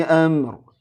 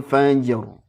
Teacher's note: r-nya tebal karena diawali fathah